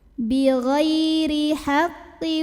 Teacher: Lalu roknya dibunyikan secara tarqiq. Karena roknya ini berbaris di bawah kasrah, maka bacanya tipis, pangkal lidah datar, ringan.